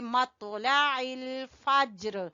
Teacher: लाम को छोटा पढ़ेंगे, आइन को लाम से मिलाएंगे